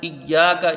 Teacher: اس میں یا کو ایک الف کی مقدار کھینچ کے پڑھا جائے گا، باقی حروف جلدی پڑھے جائیں گے